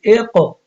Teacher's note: اب قاف پہ بھی قلقلہ ہے اور قاف موٹا بھی ہے